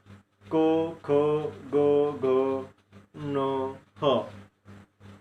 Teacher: ज्या वर्णांचा उच्चार कंठामधून होतो त्यास कंठवर्ण असं म्हणलं जातं। किंवा आपल्या फुफ्फुसातील हवा बाहेर पडत असताना कंठाला स्पर्श करून आणि त्या कंठाचा त्या ठिकाणी हे वर्ण निर्माण होण्यामध्ये उपयोग होतो, असं जे काही वर्ण उच्चारले जातात त्यांना कंठवर्ण असं म्हणलं जातं।